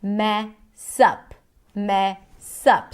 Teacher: So the stress falls on the word up, but here we see the connected speech. The S of the word mess becomes the beginning of the next syllable, which is up, and then that's what we hear, mess up.